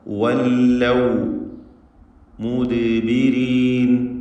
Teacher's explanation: ദാലിൻ്റെ സുക്കൂൻ ഖൽഖല സുഗ്റ നൽകി ശബ്ദം ഹറക്കത്ത് പോലെ ചലിപ്പിക്കേണ്ടതാണ്. റാഇന് കസ്റ അതുകൊണ്ട് തർക്കീഖാണ്.